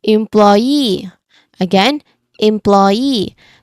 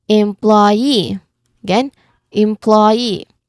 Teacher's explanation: in employee the stress doesn't come early. Instead, the word rises toward the end.